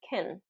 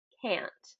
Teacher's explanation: can is typically pronounced as kin, because it's unstressed. And can't is a negative word. It gets emphasis. If you remember, or if you've gotten to the word stress lesson, you know that negative words get that emphasis or that stress.